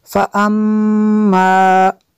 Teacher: میم شدد ہے غنہ کریں گے